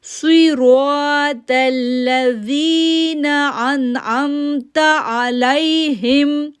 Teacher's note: تلذین, تو موٹا ہے, تل تلذین. زال سافٹ لیٹر ہے, نرمی کے ساتھ پڑھیں گے, اور یا ساکن سے پہلے زیر ہونے کی وجہ سے 2 سیکنڈ کے لیے کھینچیں گے